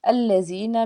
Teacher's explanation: الَّذِينَ میں یا ساکن سے پیچھے زیر ایک الف کے برابر کھینچ کے ادا کریں گے